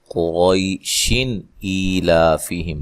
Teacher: اگر ہم ملا کے پڑھیں گے تو یہاں اظہار ہوگا، نون تنوین کا اظہار۔ قریشن ایلافیہم، ٹھیک ہے، غنہ نہیں کریں گے۔